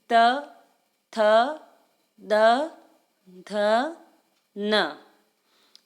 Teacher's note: त वर्ग में भी दंत और जीभ का प्रयोग करते हुए इसको बोला जाता है।